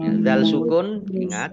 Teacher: ingat zal sukun bukan kolkolah jangan dipantulkan